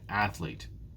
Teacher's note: There are 2 syllables in athlete. Athlete. Which one is stressed? It's the first syllable again.